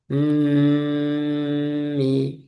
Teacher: di mim itu ada mim tasdid ya ditahan dulu